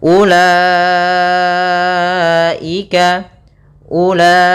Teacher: kita namakan dengan mad wajib muttasil yaitu Mad yang wajib kita panjangkan empat harakat